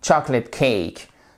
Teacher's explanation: En fait, le O, là, il se prononce pas. Vous voyez, il est absent.